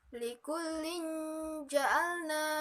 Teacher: Ada kasroh tain bertemu dengan huruf jim. Maka cara membacanya yaitu samar-samar. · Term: ikhfa